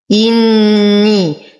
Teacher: نشد النون بغنة أكمل ما تكون، لدينا يا ساكنة ما قبلها مكسور فهو مد طبيعي حركتين.